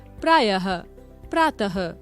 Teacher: इसका आधे ह के समान उच्चारण होता है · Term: विसर्ग